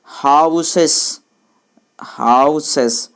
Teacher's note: हाउ बोलने में ज़्यादा टाइम लगता है, सस जल्दी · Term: स्ट्रेस्ड सिलेबल